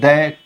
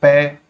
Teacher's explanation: जिनके उच्चारण में कम वायु निकलती हो। अल्पप्राण